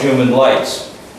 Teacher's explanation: the r sound can slip away and all of a sudden you find yourself human lights